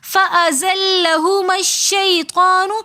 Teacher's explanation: فَأَزَلَّهُمَا الشَّيْطَانُ میں بھی ہم میم کو شین کے ساتھ ملا کر پڑھیں گے، حمزۃ الوصل درمیانے کلام میں آنے کی وجہ سے گر جائے گا۔